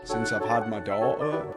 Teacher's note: The little pause you hear in between dau- and -er is called the 'glottal stop'.